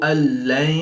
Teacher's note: نون ساکن کے بعد لام حروف یرملون میں سے ہے تو یہاں پر ادغام بلا غنہ ہوگا یعنی کہ بغیر غنہ کے ادغام کر کے پڑھیں گے